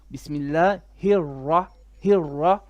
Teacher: On the ra there is a shadda. So you're supposed to say it kind of twice.